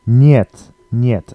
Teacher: It looks a bit like het, but it's niet. The E is pronounced as a Y-E, so yeah instead of e.